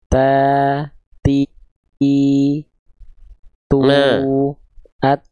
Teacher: ini ta tu at nah kelihatan enggak nempelnya di mana Nah ujung lidah disentuhkan bukan ke giginya tapi ke Pangkal gigi seri atas